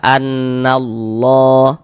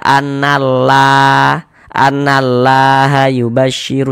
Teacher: Maka lafaz Allah itu dibaca tebal. Huruf lam jalalahnya itu kita baca tebal.